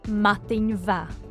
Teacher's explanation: The change from ma to va is called lenition, the softening of a consonant at the beginning of a word, and it's shown in writing by an H after the consonant.